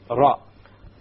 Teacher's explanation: The gums meaning the area behind the teeth. So you use the tip of the tongue and you place it close to the gums of the upper teeth, and from this one letter comes, and that is the letter Ra.